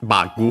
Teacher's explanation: Notice the doubling of the consonant, unlike in English, but the accent is the same, so on the ba.